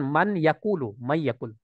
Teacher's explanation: Jadi intinya adalah kita memasukkan suara itu ke Pangkal rongga hidung